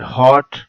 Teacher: back open rounded vowel